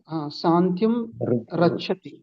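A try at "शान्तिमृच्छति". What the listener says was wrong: శాంతిం రక్షతి. రా అనకూడదు, ర అంటే కింద డాట్ ఉంది కదా, రాకి ఊకి కలపకుండా, అంటే రా అనకూడదు, రు అనకూడదు.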